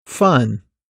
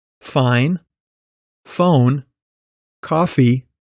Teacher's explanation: all these sounds are made by partially blocking the air moving through your mouth